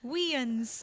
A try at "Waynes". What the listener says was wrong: After me, Waynes. Only one syllable, Waynes. No Weans.